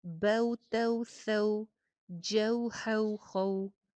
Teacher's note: زبر کی ادائیگی کے فوراً بعد ہونٹ میکسیمم گول ہو جائیں گے واو کے مخرج کے لیے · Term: واو لین